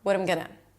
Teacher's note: So I reduced the vowel and I also connected it, and I just said it together with very little effort.